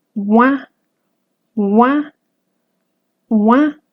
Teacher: mis labios están totalmente redondeados · se acercan mis labios entre sí pero no se alcanzan a cerrar simplemente se acercan